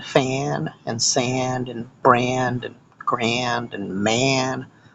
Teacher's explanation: a significant percentage of English speakers the world over do the air um instead of the ah whenever the a is followed by an N or an m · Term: air sound